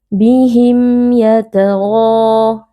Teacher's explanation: Di sini ada huruf mim yang bertemu dengan huruf ya, hukumnya adalah izhar syafawi. Cara membacanya mim sukun dibaca dengan jelas tanpa berdengung.